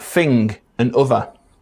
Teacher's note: th fronting in words like fing and other